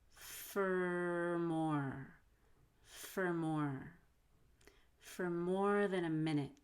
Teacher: make sure you link four to more by holding the r